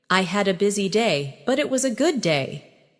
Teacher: I had a busy day, but it was a good day. Notice how your voice rises slightly at busy day and falls softly at good day. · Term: intonation